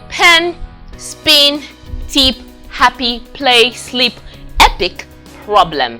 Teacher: The first one we have is the voiceless stop. That's the voiceless stop made with both lips. Voiceless bilabial stop.